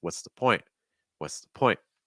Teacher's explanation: See how weak and low in pitch the is.